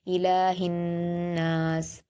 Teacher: लाम पर खड़ा ज़बर है, दो हरकत खींच कर पढ़ेंगे